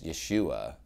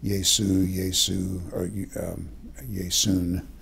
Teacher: His name in Hebrew would have been Joshua. Since Greek doesn't have the sh sound that Hebrew does, then they used a sigma S. And they have case endings, so they tried to retain their case endings for Jesus, Yesu, Yesu, or Yesun.